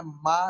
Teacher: मा, जब माँ बोलते हैं माँ तो फिर भी क्या हुआ कि नीचे वाला जो लिप्स है ऊपर वाले लिप्स से टकराया तो क्या हुआ? माँ निकला, ये भी बाइलिबियल है।